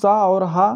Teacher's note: तीनों सा और ह ये होते हैं उष्म व्यंजन